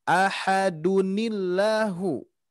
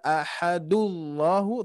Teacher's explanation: Allahnya menjadi tarki karena terjadinya tanwin di sini ada nun sukunnya dan juga yang mana kaidah yang tadi tanwin bertemu hamzah wasol maka buatlah buatlah nun sukun tersebut dikasrohkan menjadi ahadunillahu, bukan ahadullahu tapi ahadunillah